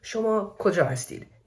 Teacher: in Persian, you have gentle rising intonation in questions. For example, shoma koja hastid, meaning where are you?